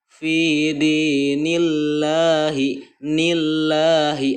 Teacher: seperti itu cara membaca tarkik ya, tipis, lafaz Allah yang sebelumnya berharokat kasroh. Membaca tarkik adalah menipiskan bunyi huruf ketika diucapkan sehingga tidak penuh mulut oleh gemanya huruf.